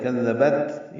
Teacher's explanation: بطغواها، کاف ذال نرمی سے، با کو تا سے ملانا ہے، یہ تا ساکن ہے اور اس پہ ہمس ہے